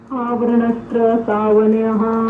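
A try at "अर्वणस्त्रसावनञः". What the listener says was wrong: नहीं, आवरण नहीं, अर्वणस्त्र सावनयः। अर है। अर्वणस्त्रय, ऐसे यहां तक कर लीजिए। अर्वणस्त्रय बोलिए। अर्वणस्त्रय सावनयः।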